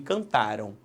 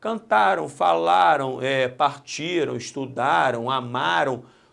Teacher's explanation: Repare que cantaram, se eu tirar o M e botar tio e ó, vai ficar cantarão. Então, este M, cantaram, representa foneticamente, no som, um O, aqui representado pelo W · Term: ditongo fonético